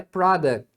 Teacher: não né na verdade uma consoante o t e o s o t normalmente vai ser omitido